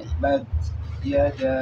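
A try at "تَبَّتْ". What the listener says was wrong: Tabat. Nah, bunyi c. Jangan sampai bunyi seperti itu. Tabat.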